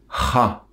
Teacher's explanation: prononcée du fond de la gorge en expulsant beaucoup d'air et rapidement. C'est comme si on essayait de dire ra, mais en expulsant beaucoup d'air du fond de la gorge.